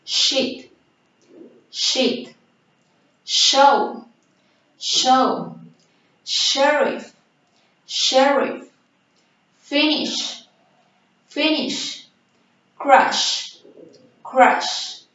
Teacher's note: This is a voiceless palato-alveolar fricative sound. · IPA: /ʃ/